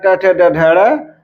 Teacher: मूर्धा पर आघात होने के कारण ट ठ ड ढ ड़